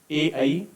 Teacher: इनका उच्चारण कंठ और तालु दोनों से होता है और इनको बोलते हैं कंठ तालव्य।